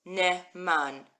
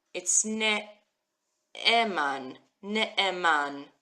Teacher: It says ne'eman, and it means faithful. It's one word, but there's kind of a pause in the word as you're reading it.